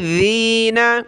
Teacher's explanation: ذال پہ زبان نکالیں تھوڑی سی